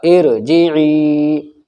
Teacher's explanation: حمزہ رازر ار، جم زر جی، ارجی، عین یا زر عی، یا ساکن سے پہلے عین کے نیچے زیر ہے یا مدہ ہوگا یعنی یا کھنچ کر پڑھا جائے گا